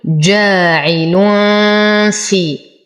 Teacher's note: نضغط على الفاء لأنه يخرج من أطراف الثنايا مع بطن الشفة السفلى